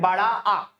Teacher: जब मुंह पूरा का पूरा खुला होता है, उसी को विवृत स्वर कहा जाता है